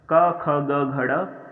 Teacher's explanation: ये कंठ का स्पर्श करते हैं, इसलिए इन्हें कंठव्य व्यंजन या कंठस्थ व्यंजन बोला जाता है। कंठ से स्पर्श करते हुए निकलते हैं ये, इनकी ध्वनि जो है हमारे कंठ से स्पर्श करती है।